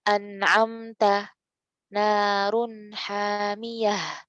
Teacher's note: maka Nun harus dibaca jelas ya harus dibaca apa jelas